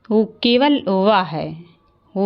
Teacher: व जो है दंत और ओट से उत्पन्न होने वाला वर्ण है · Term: दंत और ओष